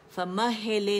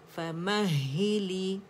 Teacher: تو مہی باریکی سے ادا کریں گے, ٹھیک ہے. فمہلی لام کسرہ لی, لے نہیں پڑھیں گے